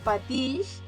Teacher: la X, patix, és sonora perquè darrere hi ha una consonant sonora que és la L. Si la pronunciem, vibren les cordes vocals.